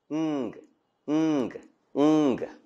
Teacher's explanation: The back of the tongue is in contact with the velum to form a closure as for k, g. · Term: Velar nasal